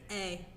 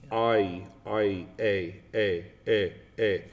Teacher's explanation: A is 2 vowel sounds that make 1. It's A and E. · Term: diphthong